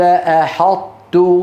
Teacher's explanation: طيب ليه اسمه ادغام لان المخرج ارتفع ارتفاعه واحده عن الحرفين الطاء اطبق على طا وانفتح على تاء فلما ارتفع المخرج ارتفاع ولم يرتفع ارتفاعين احطت اه سمي ادغاما